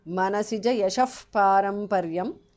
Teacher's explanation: Manasija yashaha, the visarga changes to upadhmaniya